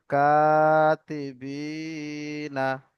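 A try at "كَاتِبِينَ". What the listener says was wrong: কিরমান কাতিবি, নুন জবর না, এটা হচ্ছে টান হবে না।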